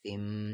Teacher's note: میم پہ تشدید ہے غنہ ہوگا، میم پہ تشدید ہو یا نون پہ تشدید ہو غنہ ہوگا۔